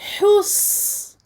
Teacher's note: Je donne au sad, sakin, sa durée de rakhawah, donc une durée longue. Hus. Et j'emphatise le sad.